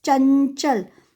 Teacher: So nya won't be fully pronounced. It's chanchal, only half pronounced. Okay, that time we will use anuswar, and we will use anuswar just before nya, which letter will be there on the top of that.